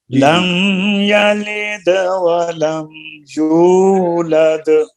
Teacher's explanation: دال میں قلقلہ بھی ہے